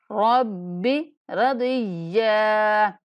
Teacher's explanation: یا پر وقف کرتے ہوئے یا کو ایک الف کے برابر کھینچ کے پڑھیں گے